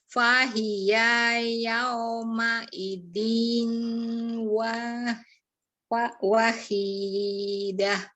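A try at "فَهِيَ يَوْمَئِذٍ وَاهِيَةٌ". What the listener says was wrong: Nah, ini bukan yauma idzin, tetapi kalau ketemu waw kan jadi melebur. Jadi yauma idziu.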